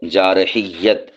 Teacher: اور یا کے اوپر تشدید پڑھنی ہے، یا کو 2 بار پڑھنا ہے